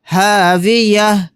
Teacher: یہاں پر تا نہیں پڑھا جائے گا اس کو ہا ساکن بنا کر پڑھیں گے.